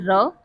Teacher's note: र हमारा अल्पप्राण ध्वनि है। साथ ही साथ यह घोष या फिर सघोष वर्ण है। लुंठित वर्ण भी इसे कहते हैं या फिर कंपित ध्वनि भी कहते हैं।